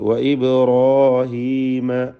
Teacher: ബാഇൻ്റെ സുക്കൂൻ ഖൽഖല സുഗ്റ നൽകി ശബ്ദം ഹറക്കത്ത് പോലെ ചലിപ്പിച്ച് വ്യക്തമാക്കുക. റായിനും അലിഫിനും തഫ്ഖീം കൊടുക്കുക.